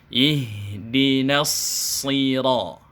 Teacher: na-nya tetap dibaca sempurna masuk ke huruf shad, baru dia ditebalkan karena huruf shad memiliki sifat isti'la